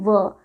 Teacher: तो व का उच्चारण दंत प्लस ओष्ठ यानी दंतोष्ठ से होता है।